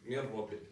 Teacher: In min rabbik, we go straight from the mim to the ra. We neglect the noon. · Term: idgham bila ghunna